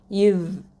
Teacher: நுனி நாக்கு முன்னாடி இருக்கக்கூடிய மேல் பற்கள் 2 இருக்குது பார்த்தீங்களா, அதில் கீழே வச்சு நாக்கு நுனி நாக்கை வச்சு சொல்லணும். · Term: புள்ளி வச்ச நுக்தா வச்ச தால்